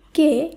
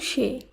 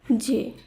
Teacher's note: একাক্ষর সর্বনাম পদে এ ধ্বনির উচ্চারণ সংবৃত হবে